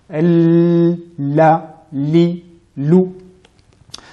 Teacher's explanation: le son passe du côté gauche et du côté droit de la langue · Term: lam